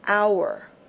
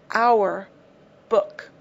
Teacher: the H is not pronounced therefore it begins with the OU